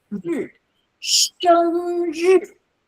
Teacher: 生 is very high, and when you're tired, you just go down for 日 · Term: fourth tone